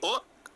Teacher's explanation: ओ जब बोलते हो तो आपके ओष्ठ भी यानी आपके ओंठ गोलाकार हो जाते हैं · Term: कंठ्योष्ठ